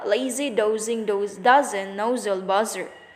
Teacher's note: Voice alveolar sibilant Z.